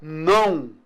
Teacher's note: Eu tenho vogal an e semivogal u.